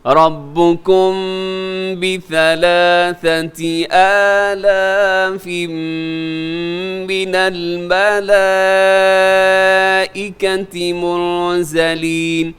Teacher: رَبُّكُمْ بِثَلَاثَةِ، اچھا رَبُّكُمْ کے آخر میں میم ساکن ہے، میم ساکن کے بعد با ہے، تو یہاں اخفاء شفی ہوگا